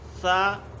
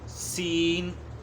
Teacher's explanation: ثا کی آواز بغیر سیٹی کی ہوتی ہے اور نرم ہوتی ہے، جبکہ سین کی آواز سیٹی والی ہوتی ہے اور سختی والی ہوتی ہے، شدت سے ادا ہوتی ہے۔